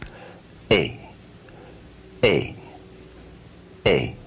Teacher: force which is behind is the original power of a but the blending of uh and e together into one sound gives us a sound which sounds neither exactly like a nor like e but a combination of the two · positioned at uh and then the more closed position at e feel how your mouth is moving from a slightly more open to a more closed position you can feel it in your lips exaggerated a little bit